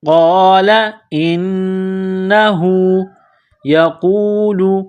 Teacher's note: قال قاف کو موٹا کرنا ہے. انہو نون مشدد ہے تو یہاں غنہ کریں گے. آواز ناک میں چھپائیں گے.